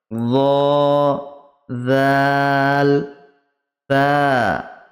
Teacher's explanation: জিভের আগা এবং সামনের উপরের দুই দাঁতের আগার সাথে লাগিয়ে উচ্চারিত হয়